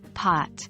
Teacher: The Midwestern states often have a more rounded O, making it sound closer to pot.